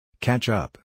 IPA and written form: kætʃ ʌp (catch up)